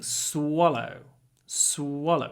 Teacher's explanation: Try to do a long s at the beginning.